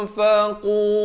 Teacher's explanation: ikhfa hakiki di sini samarkan 2 harakat.